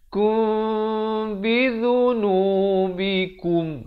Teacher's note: Ikhfa syafawi berarti sahabat-sahabat samarkan di bibir itu, maksudnya jangan kum. · Disamarkan. Bibir itu di atas dengan bawah itu dia hampir bersentuhan saja 2 harakat.